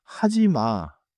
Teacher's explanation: 끝에 마가 짧게 내려가요. In English, the ma lands with a short fall. · say the phrase clearly, then let the last syllable drop a little, not crash down